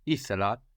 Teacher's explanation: we need the accent third from the end in the past tense in Greek, and that if we don't have 3 syllables, we will add a syllable onto the beginning to make the verb longer, and this is usually an E, but it can also be an I, like we saw it in θέλω, I want, and ήθελα, I wanted.